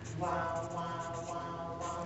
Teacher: But if you slow wow down a lot, you're actually going from an oo to an a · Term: vowel sweep